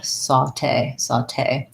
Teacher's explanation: It has second syllable stress because it comes from the French. So my te syllable is where the stress is.